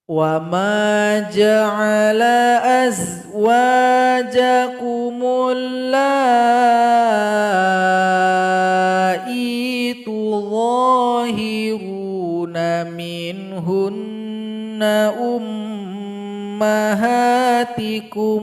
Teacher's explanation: ada bendera terletak pada huruf lam berjumpa dengan hamzah, maka dipanjangkan lam ini 4 atau 5 harokat. Kita pilih 4 harokat.